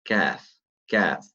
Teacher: So slightly forward from the qaf, it's the kaf.